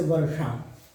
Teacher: हमारी जीभ घूम जाएगी, घूम कर ऊपर तालु जो होता है उसमें लगेगी, तब शा का उच्चारण होगा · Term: मूर्धन्य सकार